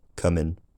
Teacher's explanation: the put cut split is broadly absent except for the word coming which doesn't have lip rounding